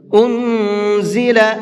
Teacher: انزل، نون ساکن کے بعد میں زا ہے، اور زا اخفا کے حرفوں میں سے ہے، تو یہاں نون کے اندر اخفا کر کے پڑھیں گے، یعنی ناک میں آواز کو چھپا کر کے پڑھیں گے۔